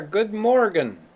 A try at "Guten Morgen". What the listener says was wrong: It seems like you're saying Good Morgen, which is close. The correct phrase in German is Guten Morgen.